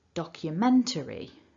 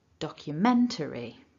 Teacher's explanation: So in terms of the strength of these syllables, a little bit of stress at the beginning and then that main stress in the middle